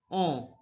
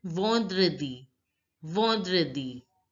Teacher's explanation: En sound in French is pronounced as on, the nasal sound